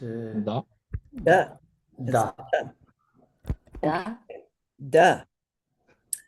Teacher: Fourth Varga, third letter. Soft, unaspirated.